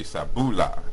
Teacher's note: the K or KH type sound becomes S, and the P becomes voiced and becomes a B. The R becomes L.